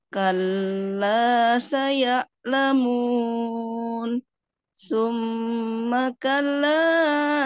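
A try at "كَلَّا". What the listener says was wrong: kalanya kepanjangan, ya. Kalla, nah itu dihindari, tapi satu kali ayunan.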